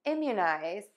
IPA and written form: ɪmjuˌnaɪz (IMMUNIZE)